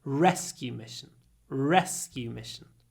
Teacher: 30 people took part in the rescue mission. And here we have a compound noun, so the stress is on rescue, mission is unstressed